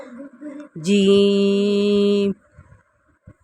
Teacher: جیم کا sound English کے word جے کی طرح، اس میں جھنجھراہٹ نہیں ہوگی